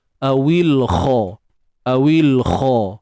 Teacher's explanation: Kha pada atas tebal huruf kha ni huruf isti'la, kena angkat pangkal lidah untuk dapatkan suara tebal tu. Kalau kita tak angkat pangkal lidah, memang kemungkinan besar kita punya sebutan tu tak cukup dia punya ketebalan tu, sifat tebal tu.